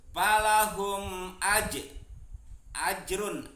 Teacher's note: Palahum ajrun di sini ada huruf jim, berarti disebutnya qalqalah sugro, bacaannya mantul salah satu huruf qalqalah yaitu jim, matinya di tengah-tengah kalimat berarti disebutnya qalqalah sugro. Ajrun berarti dibaca jelas, disebutnya idhar karena ada tanwin domah bertemu dengan ghain.